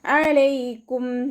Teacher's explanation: അന്റെ സൗണ്ടിനെ തൊണ്ടയുടെ മധ്യഭാഗത്തുനിന്ന് തന്നെ കൊണ്ടുവരുക ഹംസയുടെ സൗണ്ട് ആയി പോകാതെ നോക്കുക